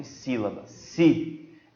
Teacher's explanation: ela já é uma proparoxítona, porque a sílaba mais forte é a antepenúltima